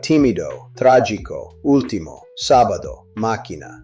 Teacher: Every single line ends with a proparoxytone, a word stressed on the third to last syllable